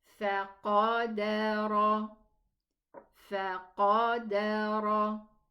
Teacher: We go down for the fa, up for the qaf, down for the dal, and up for the ra, elevated ra.